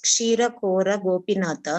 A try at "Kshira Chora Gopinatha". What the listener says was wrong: Hey, Chora. Kora nahi, Chora.